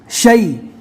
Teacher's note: تفشی اس لیے کہا جاتا ہے کہ اس کی آواز منہ میں پھیلتی ہے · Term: حروف تفشی